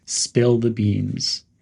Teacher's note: Stress spill with a short and clear L sound and pronounce beans with a clear E sound. Use a tone of excitement or guilt depending on the context. · Some pronunciation tips are to emphasize spill and beans.